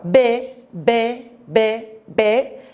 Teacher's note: B, B, B, B, iki dudağımın ikisi vasıtasıyla oluşturuyorum. Doğal olarak B ünsüzü salt dudak ünsüzü olarak geçer.